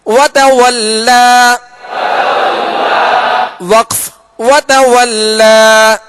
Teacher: کھڑا زبر بھی ہوگا تو الف سے بدل کر ایک الف کی مقدار میں کھینچ کر وقف کریں گے